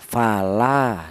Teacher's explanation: Kalau tidak ada alifnya mad thobii ini ee lam yang berharakat fathah ini dibaca pendek yaitu satu harakat atau satu ketukan